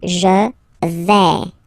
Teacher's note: when you combine this A, I, you get the sound E, really open